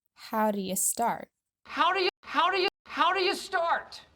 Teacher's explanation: these words are really condensed together with the ooh and do dropping completely and the u and u turning into a schwa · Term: howdya